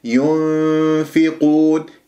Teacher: والنون مع الفاء ثنايا العليا إلى باطن الشفة من غير إطباق للشفاء حتى لا أخنق الغنة ولا أجعلها ميم، ولا تقول هذا إظهار، لقد ذهبت بالنون إلى مخرج باللسان إلى مخرج النون اللساني، وهذا خطأ، هذا ليس إخفاء. · ينفقون، لا تقول لا تضم الشفاه وأنت تأتي بالإخفاء متأثرة بضمة الياء